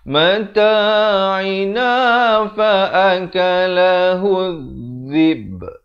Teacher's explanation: Di akhir diberikan lantunan kerana ba merupakan huruf lantunan.